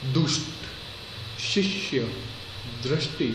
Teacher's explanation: ઉપર વધારે પડતો ભાર દેવાનો નથી આવતો જેમ કે દુષ્ટ શિષ્ય દ્રષ્ટિ આ બધા શબ્દોમાં ભાર દેવો પડે છે કોની ઉપર સંયુક્ત અક્ષરની પહેલાના અક્ષર ઉપર